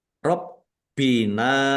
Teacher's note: Wallahi Allahnya dibaca tebal karena harokat di depannya fathah. Robbina baknya dibaca double, ada tasdidnya. Ditekan dan ditahan biar tampak doublenya.